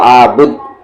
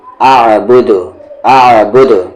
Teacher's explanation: یہاں پر قلقلہ ہو رہا ہے کیونکہ دال ہے اور اس پہ جزم ہے